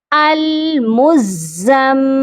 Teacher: یہاں پر دیکھیے میم مشدد ہے، یہاں غنہ بھی لازمی کرنا ہے، دونوں پر، زا پر اور میم پر پہلے سختی کرنی ہے اور پھر میم پر غنہ بھی کرنا ہے۔ المزم، میم زیر می، المزمی۔